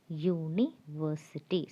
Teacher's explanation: It's not the vowel sound or the vowel U, but it's the consonant sound Y.